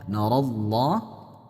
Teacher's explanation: Allahnya dibaca tebal disebabkan ada huruf sebelumnya yang berharakat fat fathah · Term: Tafkhim, tafkhim